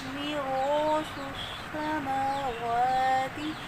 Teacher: اب الف سے پہلے حرف موٹا ہے تو الف بھی موٹا پڑھیں گے · سین میں سیٹی کی ساؤنڈ اور شد والا حرف دو دفعہ پڑھا جاتا ہے، کھڑی زبر کو کھینچ کے پڑھیں گے۔